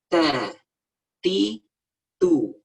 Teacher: Nah, bukan digigit, tapi disentuhkan ujung lidah ke belakang gigi seri atas kita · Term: huruf ta